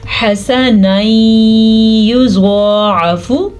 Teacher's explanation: ان کو آپس میں ملانے کے ساتھ ساتھ غننے کے ساتھ پڑھیں گے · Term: ادغام بالغنہ